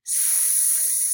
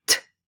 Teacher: It's not stopped. So you can make fricatives very long, like s. Unlike stops, which are non-continuants, and they're very short, like t.